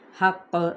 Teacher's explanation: ہم نے قاف پہ دباؤ کرتے ہوئے قلقلہ کریں گے